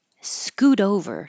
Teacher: This was an example of the T changing to a D, or technically the alveolar flap, alveolar tap, because your tongue is touching right behind your top teeth very quickly, but I spell it with a D because there's no other symbol for the tap on my keyboard.